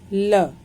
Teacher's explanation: ल का उच्चारण स्थान दंत और नाम है दंत्य